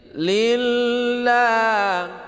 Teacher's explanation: Nah, ini dibaca tipis lafad lamnya. Lafad lam Allah dibaca tipis karena di belakang baris kasrah ya.